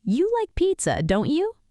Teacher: Falling intonation, the speaker is sure, expecting agreement.